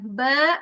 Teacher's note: ba enggak boleh keluar udara. Makhrajnya di mana? Dua bibir tertutup ya.